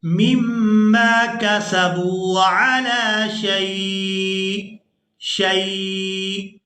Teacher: وقف کی صورت میں یہ جو حمزہ ہے اس کے نیچے تنوین ہے یہ ساکن ہو جائے گا، وقف کی صورت میں یہ ساکن ہو جائے گا، شین کو یا ساکن اور پھر حمزہ ساکن کے ساتھ ملا کر ادا کریں گے، مما کسبوا علی شیء، یعنی حمزہ کی بھی یہاں آواز آنی چاہیے۔